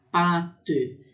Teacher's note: tem um som um pouquinho mais longo, que é pate, quando tem esse acento circunflexo no A.